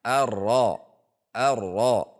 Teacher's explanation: getarnya harus ada meskipun tidak boleh ditahan sehingga getarnya menjadi berlebihan · ujung lidah pada makhraj ro dengan tekanan yang ringan. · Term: huruf ro